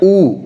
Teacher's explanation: उसी तरह ऊ, ऊ भी बनता है, मुंह का गोलाई छोटा होता है, बट क्या होता है? ऊ भी पीछे के हिस्से से निकलता है, ऊ भी बाहर पीछे के हिस्से से निकलता है। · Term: पश्च स्वर